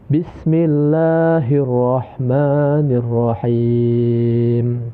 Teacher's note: Bisa dibaca 4 sampai dengan 6 harokat ya. Jadi dia lebih panjang daripada mad tabi'i. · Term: mad arid li sukun